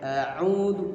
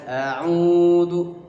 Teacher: Au dibaca panjang. 2 harokat. Sama dengan 1 ayunan. 1 ayunan. A'udzu, jangan kepanjangan. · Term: mad tabi'i